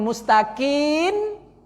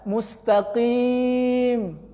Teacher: Bibir dirapatkan karena huruf mim itu makhrajnya baina syafatain, di antara dua bibir atas dan bawah, rapatkan. Mustaqim. Rapat bibir.